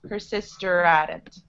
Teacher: So when I say it quickly, the H disappears again.